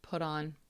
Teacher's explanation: put on sounds like one single word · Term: connected speech